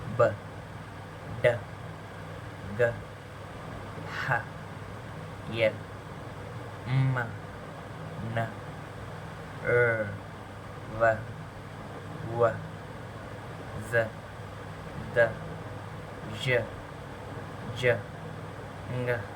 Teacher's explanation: we have a clear sound coming from the throat the vocal cords vibrates that's why these are called as voiced consonants